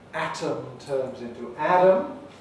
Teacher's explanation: instead of a voiceless alveolar closing they tend to get a voiced sound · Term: t-voicing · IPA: 'ætəm → 'ædəm